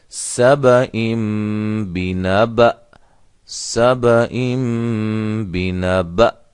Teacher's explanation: تو یہ حمزہ ہے، اس کو ہم وقف کیسے کریں گے اس پر سبئم بنبأ، سبئم بنبأ، بنبأ آخر میں جھٹکے کی آواز بھی محسوس ہو